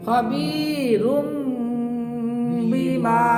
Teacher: এই যে এখন বা এসে গেছে, এখন আমি খবি রুন বলতে পারবো না, এখন একটা ছোট্ট একটা মিম ধরতে হবে। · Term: মিম বাদি